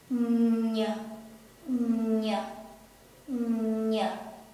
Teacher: if we pronounce the ny, we have to use the middle of our tongue. This part will rise up and touch to the roof of our mouth.